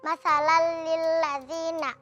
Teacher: karena fathah tanwin bertemu dengan huruf lam dibaca dengan melebur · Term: idgham bila gunnah